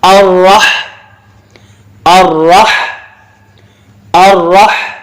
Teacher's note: next لفظ ہوگا الرحمن، اس میں را موٹا ہوگا اور ہا کو صحیح پڑھیں گے، راہ نہیں پڑھیں گے